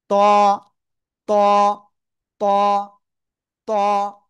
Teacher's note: জিহ্বার আগা ওই উপরের দুই দাতের গোড়ায় লাগান। লাগান লাগান। লাগিয়ে মোটা আওয়াজে পড়তে হবে।